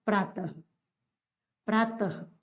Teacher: इसके आगे जो विसर्ग आ रहा है अधन विसर्ग खुद जो ह की ध्वनि के रूप में आता है